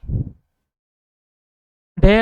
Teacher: ढ उत्क्षिप्त मूर्धनीय और सघोष और महाप्राण ध्वनि है।